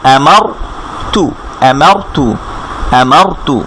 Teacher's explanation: রয়ের উপরে হচ্ছে ফাতহা দেয়া বা আ দেয়া, তখন রটা মোটা করে পড়তে হয়। এই রর আগে যদি এরকম আ সাইন থাকে বা এই ফাতহা থাকে, তখন কিন্তু আবার রটাকে একটু মোটা করে পড়তে হবে।